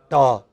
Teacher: from it is from here it is from here you know near the blade of the tongue and the alveolar ridge behind the teeth